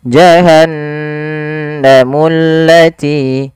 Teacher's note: alif lam syamsiyah yaitu yang diidgamkan langsung ke huruf lamnya dan ditasdidkan maka dia pada lafal mullati langsung ditekan ke huruf lam jahanamullati.